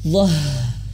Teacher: ketika h ini sukun itu harus mengeluarkan angin